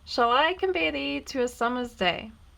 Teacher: it is an unstressed syllable followed by a stressed syllable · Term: iambic pentameter